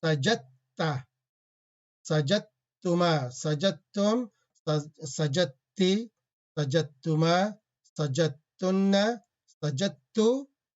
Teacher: when dal and ta comes together and the dal is sakin, and merge them, do idgham